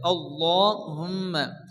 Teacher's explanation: আল্লাহ শব্দের শুরুতে যদি জবর অথবা পেজ আসে তাহলে আল্লাহর লামকে পুর অর্থাৎ ল চৌকায় পড়তে হয়